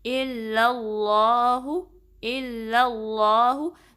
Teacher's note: آپ نے اپنی زبان کو جو پچھلا حصہ اس کو اٹھانا ہے تاکہ جو اس میں جلالہ کلام ہے وہ ہیوی پڑا جائے، پر پڑا جائے، ٹھیک ہے.